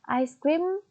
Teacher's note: penekanannya terdapat pada suku kata pertama, yaitu ice.